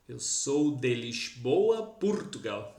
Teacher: esse S eles pronunciam como s carioca, como biscoito, lix boa. Hum.